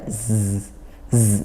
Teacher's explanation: ujung lidah makhrajnya ujung lidah bertemu gigi seri yang bawah ya gigi yang bawah tapi dia juga Rapat ini dua giginya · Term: huruf Zai